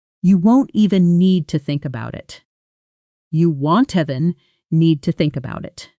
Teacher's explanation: won't even often blends together in fast speech, almost sounding like want even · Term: smooth linking between words